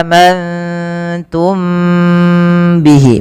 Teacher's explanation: mim mati bertemu ba, ini ditahan teman-teman, suaranya ditahan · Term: ikhfa syafawi